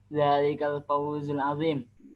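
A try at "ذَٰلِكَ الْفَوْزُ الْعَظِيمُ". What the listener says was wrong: Harus lengkap harokatnya. Lengkap. Adimu, mu, pakai mu.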